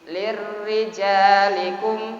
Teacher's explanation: kalau huruf kasrah menghadapi ra mati maka ra-nya dibaca tipis. Lirrijalikum gitu, tipis.